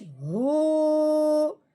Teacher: اب ہم نے ہا کو 1 الف کے برابر لمبا کرنا ہے لیکن پیش والی آواز نکالنی ہے